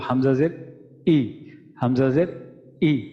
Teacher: হলকের শুরু থেকে এটা আসবে, আমরা দমটা আটকানোর পর হঠাৎ করে এটা ছাড়বো, তখন আমাদের হামজাটা উচ্চারিত হবে